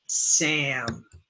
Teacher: is Sam ah a and remember this is before the M if the a is before the N or the M it becomes in the nose nasal